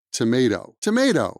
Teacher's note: the tea in the middle of tomato is not stressed and that's why it it sounds more like a d sound